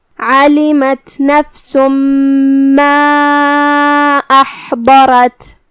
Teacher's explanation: آخر میں ہم تا کو ہمزے سے ادا کریں گے کیونکہ یہاں تا ساکن ہے.